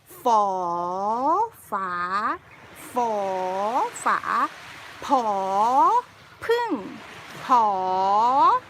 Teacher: When I pronounce them, I suck the air in and then I rise up and then go down a little bit at the end. For the high class consonants like for, suck the air in, rise up and go down a little bit.